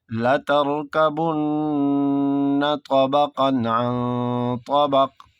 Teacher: طبقا میں یہاں اظہار ہوگا، عن طبق میں اخفا ہوگا